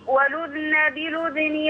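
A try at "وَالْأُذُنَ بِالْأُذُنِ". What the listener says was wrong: لا لا لا تحرك الذال ولذن بلذني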